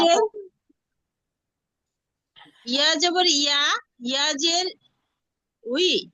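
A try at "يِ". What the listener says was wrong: না না, ওয়াউজের উই হয়, তাহলে ইয়াজের কি হবে? ই।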